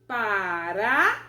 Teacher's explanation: na última sílaba eu tenho a presença de uma semivogal, uma vogal e mais uma semivogal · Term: tritongo